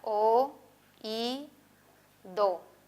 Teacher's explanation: Si tiene el acento, separamos y se trata de un hiato acentual. En oído, las podemos dividir en tres sílabas y el acento se encuentra en i.